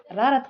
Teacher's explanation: र का उच्चारण करते समय जीवा ऊपर की ओर मुड़ जाती है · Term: लुंठित व्यंजन